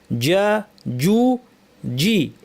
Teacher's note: জিমের মাখরাজটা দেখে নেই, জিহ্বার মাঝখান, জিহ্বার মাঝখান উপরে সরাসরি উপরে তালুতে লাগিয়ে বাতাস বন্ধ রেখে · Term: জিমের আওয়াজ